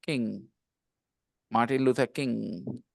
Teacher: there's no G sound at the end